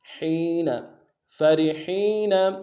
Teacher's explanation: فرحین میں فا کو نون سے ادا کریں گے، را کو باریک ادا کریں گے کیونکہ را کے نیچے زیر ہے۔ حا کو گہرائی سے ادا کرتے ہوئے یا کے ساتھ ملانا ہے، یا مدہ ایک الف دال میں کھینچیں گے، نون کو نون سے ادا کریں گے۔